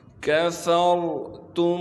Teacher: را ساکن سے پہلے زبر ہونے کی وجہ سے را کو موٹا کر کے پڑھیں گے ، تا کو میم سے ملائیں گے بغیر غنے کے، کفرتم